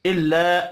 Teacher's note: الا الف مدہ ہے ایک الف کے برابر کھینچ کر پڑھیں گے